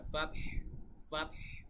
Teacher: পরপর দুইটা সাকিন হয়ে যাওয়ার কারণে ফাতহু না বলে আমরা ফাতহ ফাতহ, মানে হাটা খালি এভাবে আসবে, ফাতহ ফাতহ, ঠিক আছে।